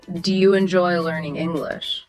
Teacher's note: That English at the end, your voice goes up, inviting a yes or no. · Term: rising intonation